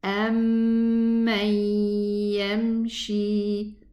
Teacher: This mim shadda takes 2 counts for the ghunna.